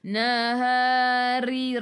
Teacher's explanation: ri ni ra baris bawah nipis, jadi kena senyum